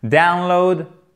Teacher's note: accents toniques ici sur la première syllabe